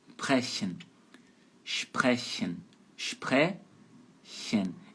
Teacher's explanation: S antes de P de pato e T de tatu soa como SCH. É um chiado.